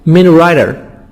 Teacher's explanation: Writer, T soft D between two vowels. The T here, we pronounce it D. Fast D or soft D.